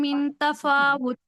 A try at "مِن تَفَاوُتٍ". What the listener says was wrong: من تفاوت، من پہ اخفا کیجئے.